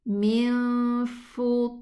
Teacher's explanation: The fa is not elevated. So be careful.